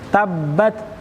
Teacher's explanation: mana tak tersebut punya sifat namanya sifat hams sifat Hamas itu nafasnya mengalir apalagi ketika sukun ketika dia mati